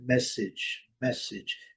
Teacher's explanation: Primeira sílaba forte, o A com som de I, o E não é pronunciado.